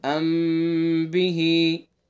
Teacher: اور اخفاء شفوی میں بھی غنہ ہوتا ہے، جہاں بھی اخفاء شفوی بھی ہوگا، یعنی میم ساکن کے بعد با آئے گا تو غنہ کریں گے